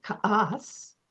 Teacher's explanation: that has a glottal stop in it because it's an Athabascan word